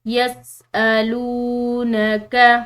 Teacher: لام کے بعد واو ساکن آ رہی ہے تو ہم نے اس کو پڑھنا ہے ایک الف کی مقدار لمبا